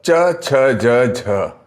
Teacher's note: चवर्ग तालु से बोलने वाले, तालु, और इनको तालव्य कहा जाता है।